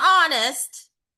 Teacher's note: But when we pronounce it, it's only the vowel sound because it's a silent H.